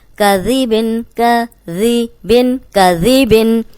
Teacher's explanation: اس میں سیٹی کی آواز نہیں آئے گی, اور اوپر سامنے کے جو دو دانت ہیں ان کے اندرونی کنارے پہ زبان رکھ کے ادا کریں گے تو سیٹی کی آواز نہیں آئے گی, ورنہ یہ زا بن جائے گا.